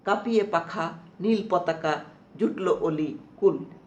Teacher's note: কাঁপিয়ে পাখা নীল পতাকা জুটলো অলি কুল। এই যে প্রতিটা পর্বের শুরুতে আমরা জোর দিচ্ছি, ঝোঁক দিচ্ছি, জোর করছি, এটাই হচ্ছে শ্বাসাঘাত।